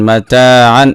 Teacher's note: তানবিনের পরে হামজা আসছে ইজহারের অক্ষর, স্পষ্ট করে গুন্না সারা পড়তে হবে